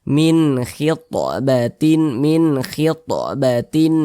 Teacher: halqi maka nun sukun berjumpa dengan huruf k hukumnya izhar halqi karena dia izhar maka dibaca jelas tidak berdengung minnya kita baca jelas huruf nunnya kita baca jelas Min begitu